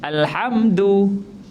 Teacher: huruf Dal ada makhrajnya Dal menyentuh pangkal gigi bukan menyentuh lelangit